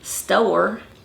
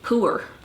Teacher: So you have some of these elongated vowels where you're gonna add a or a oa, and that's all dependent upon whether it's gonna be a back vowel or a front vowel. So if you've got your back vowels like oo, o, and then you have an R, say after it, you're gonna add a little W sound in there